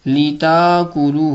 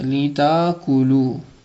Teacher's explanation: سخر البحر لتأکلوا یہاں پر وہ قاعدہ استعمال ہو سکتا ہے کہ تأکلوا کے اندر حمزہ ساکنہ ہے اور حمزہ ساکنہ سے پہلے فتحہ ہے، تو ہم حمزہ ساکنہ کو الف میں تبدیل کر سکتے ہیں. لتاکلوا ہو جائے گا، لتاکلوا.